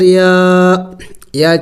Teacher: دیکھیے یہ کڑی زبر ہے اور کڑی زبر کو ایک الف کے مقدار لمبا کرنا ہوتا ہے، تو یا کو ایک الف کے مقدار لمبا کیا جائے گا